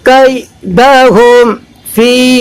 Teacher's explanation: میم ساکن کا اظہار، فی اس لیے کہ میم ساکن کے بعد فا ہے